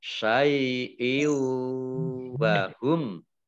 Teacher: Kasrah tanwin bertemu dengan huruf wawu. Ini mat idgham bi gunnah, ya, mendengung wawu ditandai dengan wawunya ada tasdidnya.